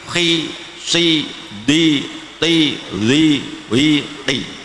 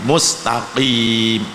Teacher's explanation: karena asalnya tafkhim maka bibirnya harus agak dimoncongkan dulu ya, tidak langsung meringis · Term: huruf tafkhim yang di kasrah